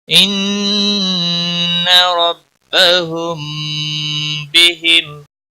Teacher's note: ربهم، میم کے اوپر گنہ ہوگا، میم ساکن کے بعد جب بھی با اور میم آتا ہے، میم جب آتا ہے تو ادغام شفوی ہوتا ہے، اور با جب آتا ہے تو اخفاء شفوی ہوتا ہے، اس لیے یہاں پر اخفاء شفوی ہوگا، اخفاء شفوی ہوگا، اس گنہ کو اخفاء شفوی کہتے ہیں۔